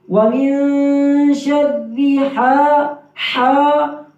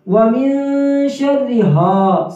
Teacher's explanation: حا کی آواز صحیح نکالیں گے گلے کے درمیان سے